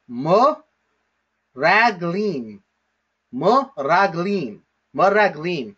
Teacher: underneath the mem is a vocal schwa